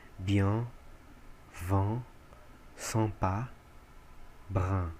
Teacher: Nos primeiros, EN, IM, IN e IM e YN, o som ele é como se fosse um é aberto, e nasalizado. Parece muito um A, mas não é um A.